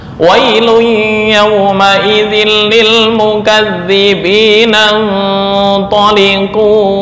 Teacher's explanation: Mukadzibina, langsung nan seolah-olah alif di sini hilang. Hamzah wasal hilang. Kenapa? Karena di tengah.